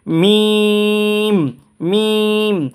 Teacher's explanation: এই হরফটা উচ্চারণ করব আমরা এই যে বা যে জায়গা থেকে উচ্চারণ করেছি একই জায়গা থেকে, পার্থক্য শুধু এতটুকুই, এখানে বা উচ্চারণ হয়েছে আপনার 2 ঠোঁটের ভিজা অংশ থেকে, কিন্তু মিম উচ্চারণ হবে 2 ঠোঁটের শুকনো অংশ থেকে। যেমন বা ভিজা অংশ মিম উচ্চারণ করব মিম, 2 ঠোঁট এমনে চিমটি মেরে ধরে শুকনো অংশ থেকে আমরা উচ্চারণ করব এবং 3 আলিফ টানবো মিম মিম।